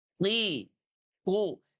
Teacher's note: Saat kita mengucapkan huruf qaf, bagian belakang lidah secara otomatis terangkat